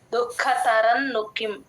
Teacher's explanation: ఖ కి మహాప్రాణం యూజువల్ గా మిస్ చేస్తూ ఉంటారు